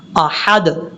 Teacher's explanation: حمزہ کے بعد جو ہا ہے اس ہا کو بھی باریک پڑھنا ہے